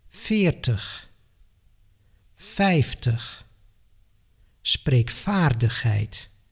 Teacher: several voiced consonants, like the V, tend to lose their voice in the spoken language